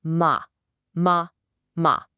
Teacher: Now try saying ma ma ma. Feel that the vellum dropped and now the air and sound are coming out your nose.